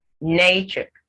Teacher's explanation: can tell the syllable that is pronounced with more emphasis nature the nay is more pronounced that is the stressed syllable